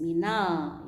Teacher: Huruf lam matinya dibaca dengan jelas. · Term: al-qamariyah